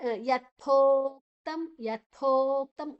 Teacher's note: ಥೋವನ್ನ ಸ್ವಲ್ಪ ಉಸಿರು ಹೊರಗೆ ಬಿಟ್ಟು ಸ್ವಲ್ಪ ಪ್ರೆಷರ್ ಹಾಕಿ, ಸ್ವಲ್ಪ ಭಾರ ಹಾಕಿ ಹೇಳ್ಬೇಕು. ಯಥೋಕ್ತಂ ಯಥೋಕ್ತಂ ಗಾಳಿ ಹೊರಗೆ ಬರಬೇಕು. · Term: ಮಹಾಪ್ರಾಣ